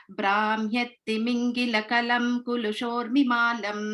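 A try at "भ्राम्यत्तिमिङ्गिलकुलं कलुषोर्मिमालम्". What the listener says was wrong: So Brahmyattimingila kalushormimalam. First one is kula, next is kalu.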